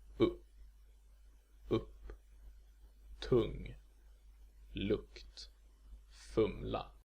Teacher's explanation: a sound halfway between short Ö and short O, which means that it's a central vowel. To put it somewhat more specifically, it's kind of like a schwa, but with rounded lips. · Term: Short U